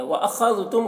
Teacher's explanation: खा को पुर पढ़ेंगे, खा हुर्फ़ मुस्तालिया में से है, और दाल को बारीक पढ़ेंगे